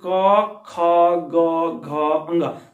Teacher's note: आपके कंठ की मदद से ये वर्ण बोले जाते हैं, इस वजह से इसे कंठ स्पर्श व्यंजन कहते हैं, इसे कंठ के द्वारा ये बोले जाते हैं।